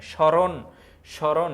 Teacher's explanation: ফলাযুক্ত বর্ণটির উচ্চারণ সামান্য নাসিক্য প্রভাবিত হয়ে ওঠে মানে নাসিক্য নাকের মাধ্যমে স্মরণ স্মরণ এই যে এই জায়গায় হসন্ত